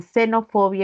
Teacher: La letra X se representa como una alveolar y es fricativa por el modo.